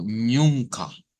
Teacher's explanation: es la nasalización de la u